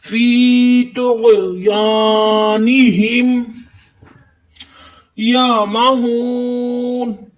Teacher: طا بھی حروف مستعلیہ ہے اور غین بھی حروف مستعلیہ، دونوں لفظ ہی موٹے ہوں گے